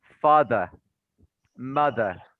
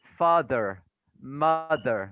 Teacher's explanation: mostly british people don't pronounce the r sound very much but the american people pronounce it very clearly